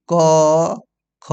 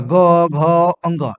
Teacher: तो कंपन घर घर नहीं हो रहा है, लेकिन जैसे ही आप ग घ बोलिए तो कंपन होगा, ग घ अंग। इसमें क्या है कि आपको कंठ थरथराएगा, यानी कि घर्षण होगा, इसलिए इसको नाम पड़ा है घोष।